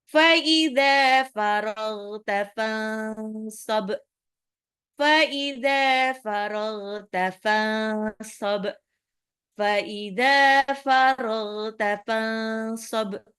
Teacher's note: Fansab, nun sukun ketemu shad agak ditahan karena dia ikfa